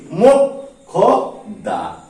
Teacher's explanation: প্রথমে ক হবে তারপরে খ হবে, অর্থাৎ ক খ উচ্চারণ হবে।